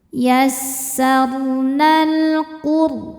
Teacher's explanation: Ro sukun dibaca secara tafkhim karena didahului harokat dhammah, maka ro-nya dibaca tebal.